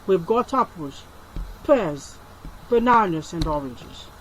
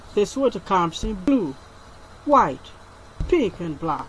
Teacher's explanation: So intonation falls on the last item to show that the list is finished. The last item when called receive the falling tone to show that the list has been exhausted. · You have rising, rising, then the final one falling. So intonation falls on the last item to show that the list is finished. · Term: Rise and fall intonation